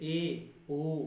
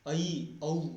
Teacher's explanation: ए ओ मुख खोलना पड़ रहा है, ऐ औ उससे भी ज़्यादा मुख खोलना पड़ रहा है